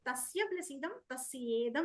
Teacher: మొదటి పదం చివర ఉన్న 'a' తర్వాత 'i' చేరడంతో 'e' శబ్దం ఏర్పడి, అది Tasyedam గా మారింది. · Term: గుణ సంధి